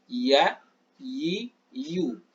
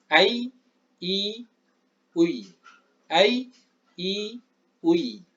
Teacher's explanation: Makhraj ya sama, yaitu ketika wasatul lisan, wasatil hanakil a'la, ketika tengah lidah sejajar dengan al-hanak al-a'la, rahang atas, sehingga keluar iya. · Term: makhraj dari huruf ya